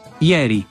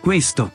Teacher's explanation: Sin embargo, en posición tónica, el sistema vocálico italiano se extiende a 7 vocales, ya que hace diferencia entre la E abierta, ieri, y la E cerrada, questo